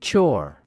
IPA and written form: tʃɔːr (chore)